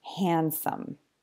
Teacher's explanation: can also happen inside just one word like with handsome so because D is between the two consonants N and s it often just disappears and you just hear handsome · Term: elision, elision of the D sound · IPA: /d/